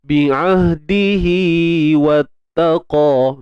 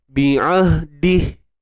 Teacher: bunyi hi 2 harakat tu dia akan berlaku ketika silah sahaja. Ketika sambung. Sebab tu namanya mat silah.